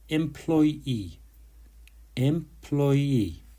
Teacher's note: The stress is on the second syllable, ploy.